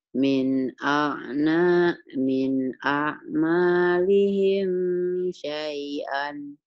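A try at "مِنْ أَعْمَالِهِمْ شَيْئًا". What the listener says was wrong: Himnya jangan ditahan, idhar. Minnya idhar. Min a'malihim syai'an.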